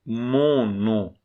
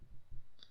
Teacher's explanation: Porque o m nasaliza a da frente e o n também nasaliza a da frente. Mon no. A vogal é nasal.